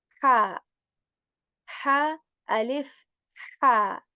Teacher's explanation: this ha comes from the middle portion of throat, which is like more airy, right? Constricting the muscles of your throat to articulate this ha. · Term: letter of throat